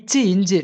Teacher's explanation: நாவோட இடைப்பகுதி, அன்னத்தின் இடைப்பகுதி.